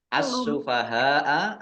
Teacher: sinnya dibaca dobel ya kemudian ha fathah Alif Mad thi'i tetapi karena bertemu dengan huruf hamzah dalam satu kata maka menjadi mad wajib muttasil harus dibaca panjang lima harakat